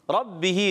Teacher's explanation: रा पर ज़बर आने की वजह से रा हो जाएगा पुर। रब्बिही बा मुशद्दद, ज़रा रुक कर खड़ी हरकत को एक अलिफ खींचना है।